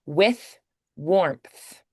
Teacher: So with and warmth are both unvoiced THs.